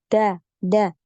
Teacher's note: di punggung ujung lidah nempel di Pangkal gigi seri atas atau di tempat tumbuhnya gigi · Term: huruf Dal